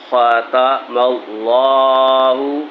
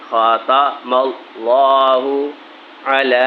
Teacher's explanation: اللہ کا حروف آ گیا تو اس کو موٹا کر کے پڑھیں گے